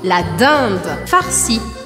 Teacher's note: E eu anasalo o som sem marcar o I.